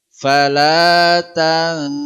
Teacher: nun sukun ketemu Sin ini Ikfa jadi ada ghunah yang sempurna